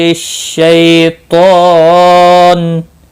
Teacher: شی یا لین ہے، تھوڑا نرمی کے ساتھ کھینچ کر ادا کریں گے۔ طا مستعلیہ ہے، پر پڑھا جائے گا، اس کے اوپر کھڑی زبر بھی ہے، 1 الف کے برابر کھینچ کر پڑھیں گے۔